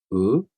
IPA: u